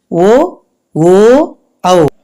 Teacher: కంఠము ఓష్ట్యం నుండి పుట్టేటటువంటి అక్షరాలని కంటోస్ట్యాలు అని అంటారు